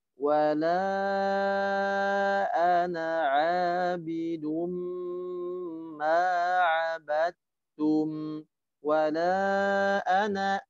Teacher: di sana naknya dibaca pendek, tanda alif di sana tidak dibaca panjang, ya. Wala ana kemudian a-nya dibaca panjang, mad tabi'i.